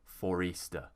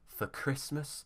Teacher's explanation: we have four uh usually we don't pronounce the r but if there's a vowel at the beginning of the next word we will use the r to get to the next word